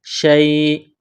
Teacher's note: علی شیء، شین یا زبر شی، حمزہ دو زیر ان، شیء، جب وقف کریں گے تو حمزہ کو سائلنٹ کریں گے